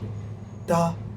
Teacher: I'm stopping it with my teeth.